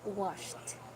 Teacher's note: If the word ends with a voiceless sound, that is sh, it should be a soft T. So instead of saying washed or washed or washed, you say washed.